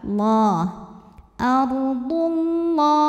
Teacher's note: lam pada lafaz Allah dibunyikan secara tafkhim karena huruf sebelumnya baris dhammah, maka baca lamnya tebal